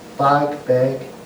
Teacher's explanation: especially in East Ulster, the A sound became E.